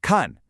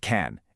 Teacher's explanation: It's a sharp, falling fourth tone.